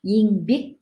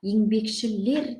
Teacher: Яғни сөздің соңғы буынына екпін түседі дедік. Мысалы, еңбек десек, бекке екпін түсіп тұр. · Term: Сөз екпіні